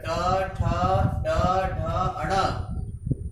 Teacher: इनका उच्चारण मूर्धा स्थान से होता है, इसलिए इन्हें मूर्धन्याः कहा जाता है।